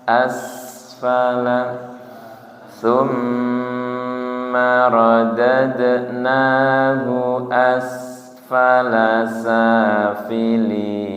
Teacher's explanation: sin sukun rokhwah pertama tidak mantul, nggih. Kemudian yang kedua tidak ditahan terlalu lama, nggih. Asfala tidak asfala, tidak sampai mantul nggih, tidak sampai ase nggih.